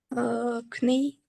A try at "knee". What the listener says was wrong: Yes, but when you pronounce this word, you don't say the first letter K, you just say knee, knee. So here is a silent letter.